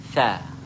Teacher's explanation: Jadi semasa menyebut huruf tha mesti keluar angin. Tha. Keluar, perjalanan angin tu keluar. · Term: al-hamsu